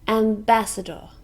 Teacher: four syllables can you hear the stress it's on the second syllable